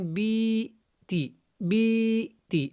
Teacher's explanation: ہم نے بئی لمبا زیادہ لمبا نہیں کرنا کیونکہ یہ جو یا ہے یہ یائے لین ہے